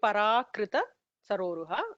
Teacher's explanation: it'll be parakrita saroruha. The ra is a dhirgam.